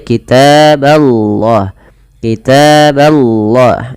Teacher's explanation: Allahnya didahului dengan fathah, maka lafal Allah tebal. Tapi huruf ba-nya tidak boleh ditebalkan ya teman-teman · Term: ba-nya tipis